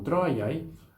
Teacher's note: a gente tem uma vogal longa, tro, que torna a sílaba longa, e depois um ditongo, ai, que também vai tornar a segunda sílaba longa.